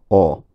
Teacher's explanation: In modern Scots, this tends to be a mid-height rounded back vowel, something like o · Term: lot and pot vowel